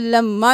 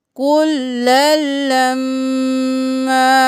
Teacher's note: ایک الف کے برابر کھینچیں گے، اور میم پر تشدید ہے غنہ بھی کریں گے، کل لما۔ اسی طرح کا آگے دیکھ لیجئے، لما، یہاں پر بھی لما نہیں کرنا، ایک الف کے برابر کھینچنا ہے، لما۔